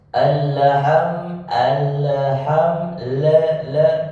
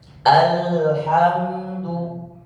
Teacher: Bagaimana cara membaca supaya tidak terpantul? Tahan di huruf lam sehingga seakan-akan dia punya satu ketukan atau satu harokat.